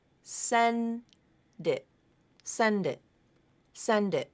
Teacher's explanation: You can hear that D has now moved over to the beginning of the next word.